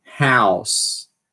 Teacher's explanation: House, o A sendo uma vogal anterior, que é do jeito que a maioria dos falantes nativos falam